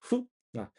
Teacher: 可以是夫，也可以是写成呼啊，但是读音呢介于这两者之间